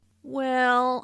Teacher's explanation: Notice how the vowel is drawn out to sound like well.